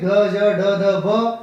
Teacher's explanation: अल्प प्राण सघोष में ग ज ड ध भ बोलने में वाइब्रेशन होगी, लेकिन कम ताकत लगेगी।